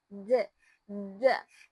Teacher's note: make sure that the tip of your tongue reaches the back of your teeth and play a vibration with your vocal cords